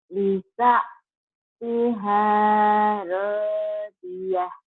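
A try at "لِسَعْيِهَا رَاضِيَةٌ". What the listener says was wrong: Bukan Lisa Tiha, Lisa Iha ya. Ini iya di bawah. Ini iya ya Lisa Iha. Lisa Iha Radiyah.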